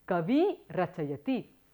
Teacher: the purva swara, the ikara becomes long and you have the final form which is kavi rachayati.